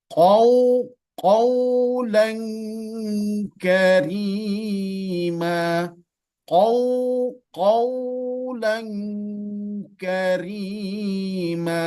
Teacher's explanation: Di situ ada waw sukun sebelumnya fathah, ada sifat lin di situ. Lin itu maknanya lunak atau lembut.